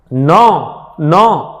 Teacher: ઉચ્ચારણ કરતી વખતે મુખનો માર્ગ બંધ થઈ જાય અને હવાને નાકમાંથી પસાર થવું પડે, એટલે નાસિકામાંથી હવા બહાર આવે ત્યારે અનુનાસિક વ્યંજન બને છે.